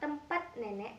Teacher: bunyi T yang sebenarnya berupa bunyi hambat letup pada kata tempat nenek dilafalkan tanpa hambat letup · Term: pelepasan